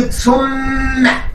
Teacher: ميم ثم هنا مشددة بالفتح، فلا بد إن أنا أغن هذه الميم